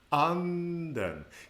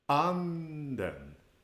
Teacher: an acute pitch accent where the pitch starts high and falls down